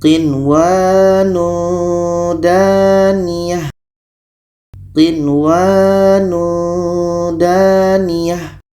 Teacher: Nun jelas, waw jelas, dan tidak boleh dengung. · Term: izhar wajib